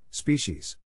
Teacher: To pronounce species, have in mind that the size of the syllable indicates where the accent or stress is. In this case, the accent is in the first syllable, corresponding to spe.